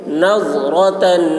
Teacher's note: ضاد کی آواز موٹی ہوگی, را پر ہوگی